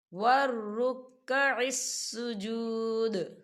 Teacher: ہم یہاں پر دال پر قلقلہ کریں گے، وقف کی صورت میں دال جو ہے وہ ساکن ہو جائے گا